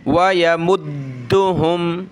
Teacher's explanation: दाल पे ये तशदीद है तो दाल को हमने सख्त करना है